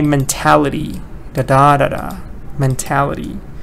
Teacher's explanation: So mentality is the noun form, and stress is on te, mentality.